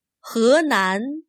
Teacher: Notice that h-e is not pronounced as he this Chinese word for river sounds more like: huh